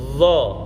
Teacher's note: Nah, sekarang dha, lidahnya tinggal tarik ke atas. Dha itu ada pada gusinya, tempat tumbuhnya gigi kelinci ini nempelnya. Dha, sembari pangkal lidahnya dinaikkan karena ini huruf isti'la, yaitu huruf yang cara mengucapkannya pangkal lidahnya dinaikkan.